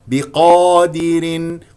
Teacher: قاف مفخمه مرتبه اولى لان مفتوحه بعدها الف والباء اكسرها جيدا والدال ايضا اكسرها دي واذا نقف طبعا سوف